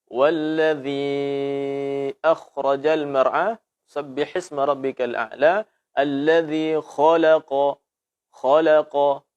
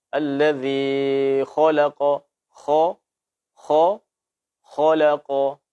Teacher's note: Lebih benar dan lebih selamat untuk ketika kita membaca huruf kha ini dalam keadaan fathah, itu tanpa memonyongkan bibir. Boleh dimonyongkan saat dhammah saja.